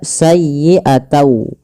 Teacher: Awalnya bunyi sayyi'atan dengan huruf nun yang diakhirkan, karena dia bertemu dengan waw, huruf n-nya itu diganti dengan waw. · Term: idgham